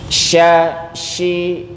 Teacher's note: sifat tafasyi nyebar dia anginnya